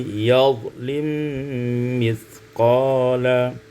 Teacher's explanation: idghamul mim fil mim, diidghamkan mim pada mim menjadi yadhlim mithqala.